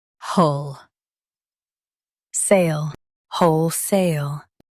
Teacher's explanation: Emphasize whole and keep sale clear.